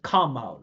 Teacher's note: The the second part is always the primary stress.